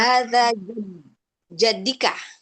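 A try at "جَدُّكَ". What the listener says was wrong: Harokatnya, harokatnya nggak kasroh lagi ya Umu. Harokatnya itu asli harokatnya adalah dhammah, jaddun. Nah, jaddun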